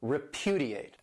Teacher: This verb has 4 syllables and the stress is on that second syllable